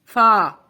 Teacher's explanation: جب اوپر کے دو دانت کا سرا ہمارے ہونٹ سے لگتا ہے تو فا ادا ہوتا ہے